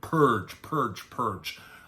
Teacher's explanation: the plosive p and ending with a stretched out er sound and then the j